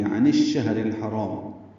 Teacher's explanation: ادغام شمسی ہوگا، نون شین سے مل رہا ہے، شین کو ہا سے ملانا ہے · کو الحرام کے لام سے ملانا ہے، یہ اظہار قمری ہے، تو الشہر میں الف لام نہیں پڑھا جا رہا